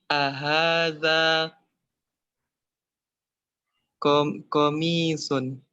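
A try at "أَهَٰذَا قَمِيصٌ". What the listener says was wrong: Ahaza komisun. Kok gitu? Tapi kayak nanya gitu loh. Apakah ini pena?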